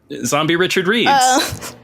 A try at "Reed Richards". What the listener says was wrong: Reed Richards, not Richard.